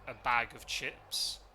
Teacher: the a and the of will be pronounced with the schwah. Instead of being a and of, it' be more like a and of.